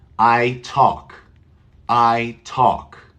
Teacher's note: there is no l in the pronunciation